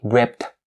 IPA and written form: riːpt (ripped)